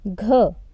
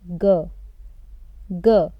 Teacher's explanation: It is consonant gh. We pronounce it as gh, but because it is the second syllable and because in second syllable the stress is less, we will pronounce it as g.